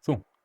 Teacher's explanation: a voiceless velar nasal